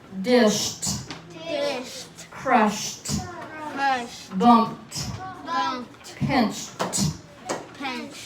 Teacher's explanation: do you hear the end of it being a T in sound? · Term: T sound